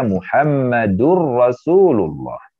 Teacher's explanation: Karena harus idgham ke ra-nya, maka dibaca Muhammadur Rasulullah